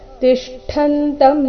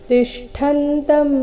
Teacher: ಷಟ್ಕೋನ್ ಶ ಮತ್ತೆ ಠ ಕೂಡಿ ಸಂಯುಕ್ತಕ್ಷರ ಇಲ್ಲಿ ಟ ಬರಬಾರದು ಠ